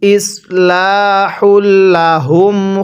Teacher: হাগুলো উচ্চারণ করার সময় গলার মধ্যে আওয়াজ করব। আর এই হাগুলো উচ্চারণ করার সময় মুখ দিয়ে হালকা বাতাস বের করব।